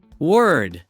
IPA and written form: wɝd (word)